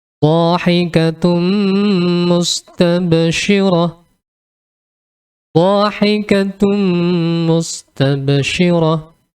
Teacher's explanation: Kita lanjut ke contoh berikutnya, yaitu dalam kasus ini atau contoh kali ini adalah dhammatain bertemu dengan huruf mim, ya, dhahikatun, kemudian bertemu dengan huruf mim, maka dhammatainnya ini melebur atau masuk ke huruf mim.